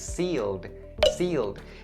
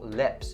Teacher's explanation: This word has the long E sound as opposed to the short E sound in the word lips.